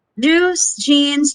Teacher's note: with no air coming through the mouth it's like you're holding your breath but then moves into a fricative with some air released